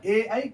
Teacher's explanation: ए और ऐ ऐसा शब्द है जिसको कंठ द्वारा भी निकालते हैं, उसमें तालु का भी कुछ प्रयोग होता है, तब जाकर के शुद्ध ए और ऐ निकलता है। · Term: कंठ तालु